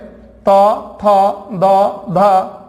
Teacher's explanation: त थ द ध यह दांत से बोले जाते हैं